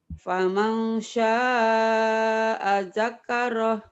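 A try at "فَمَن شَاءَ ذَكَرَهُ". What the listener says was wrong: Ada tasdid tuh. Jangan ada tasdid. Ayo lagi. Datar. Faman sya'a. Faman sya'a zakarah.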